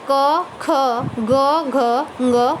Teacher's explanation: सबसे पहले है कंठे व्यंजन। जिन व्यंजन ध्वनियों के उच्चारण में जिह्वा के पिछले भाग से कोमल तालु का स्पर्श होता है वो कंठे ध्वनियाँ कहलाती हैं।